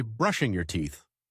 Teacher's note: Stress the first syllable brush and the word teeth with a clear sound.